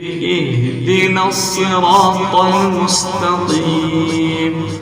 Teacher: صاد اور طا کو پر کر کے پڑھنا ہے یعنی ان کو موٹا کر کے ادا کرنا ہے